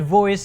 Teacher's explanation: when you say the word voice a vibration is produced because of the presence of the phoneme v